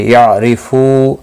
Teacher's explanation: را زیر کی وجہ سے باریک پڑا جائے گا